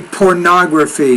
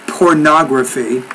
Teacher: stress is on that third to the last syllable